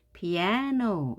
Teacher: 여기서는 a가 제일 힘이 세서 피아노 이렇게 발음을 합니다 피아노 우리는 그대로 피아노라고 하지만 영어는 피아노 높낮이가 생기는 겁니다 피아노